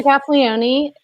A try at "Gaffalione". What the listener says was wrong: Drop the E. Just Gaffalione.